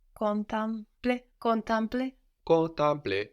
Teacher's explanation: So the same thing that happened to the E in trente is happening to it here in to contemplate. It ends up sounding more like an A when it's put into the nose because of that M that gets swallowed up.